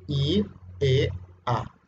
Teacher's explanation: La altura de la lengua sube ahí, la E se mantiene así plana y en la A baja